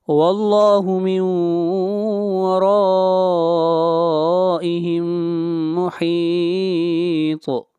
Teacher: یہاں پر مد متصل ہے، اس مد کو 3 الف کے برابر کھینچ کر پڑھیں گے